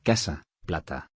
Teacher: A. Representa la vocal abierta central.